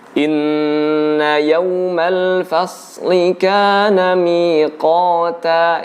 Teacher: Inna yawmal fasli, fasli ini juga termasuk hal yang berlebihan. Ya, jadi shad itu huruf lidah. Lidah yang kemudian mendekat dengan gusi atas, bukan huruf bibir. Jadi tidak perlu menggerak-gerikan bibir kita, ya. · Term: huruf shad